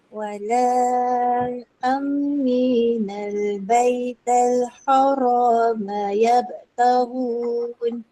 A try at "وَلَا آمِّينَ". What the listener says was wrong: Ni kena baca panjang 6 harakat. Wala aminal. Wala 4 atau 5. bukan aminal.